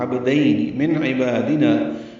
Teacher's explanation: من میں اظہار ہے نون ساکن کے بعد عین آنے کی وجہ سے. عبادنا، با اور نا دونوں الف مدہ ہے.